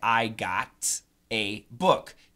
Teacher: the flap T pronunciation is like a D sound